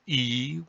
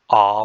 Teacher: a high vowel e with my mouth pretty closed or ah with my mouth pretty open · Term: height of a vowel